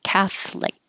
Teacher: there's an O in the middle, but we don't say the O, it just drops.